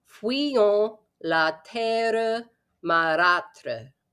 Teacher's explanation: the U gets kind of slid through like a W in fuyons